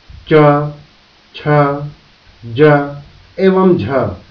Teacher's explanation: मूर्धन्य रेट्रोफ्लेक्स, वे व्यंजन ध्वनियां जिनके उच्चारण के समय जीभ का निचला भाग घूमकर ऊपर तालु को छूता है, जिससे अवरोध होता है, उन्हें मूर्धन्य ध्वनि कहा जाता है, जैसे ट, ठ, ड एवं ढ। तालव्य, जब जीभ का मध्य भाग कठोर तालु को स्पर्श करके वायु को रोकता है, तो निकलने वाली ध्वनि तालव्य ध्वनि कहलाती है, जैसे च, छ, ज एवं झ तालव्य ध्वनियां हैं।